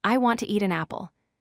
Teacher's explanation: Stress want, eat an apple strongly. The words to and stay weak.